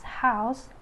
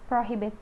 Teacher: this sound is a glottal fricative